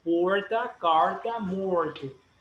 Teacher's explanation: en Sao Paulo, tienen una R que es como la R de inglés. Ellos no dicen porta, dicen porta, carta, morte.